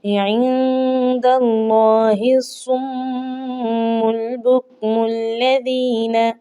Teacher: خالی الف نہیں پڑھا جائے گا، میم کو لام کے ساتھ ملانا ہے کیونکہ لام کے اوپر جزم آ چکی ہے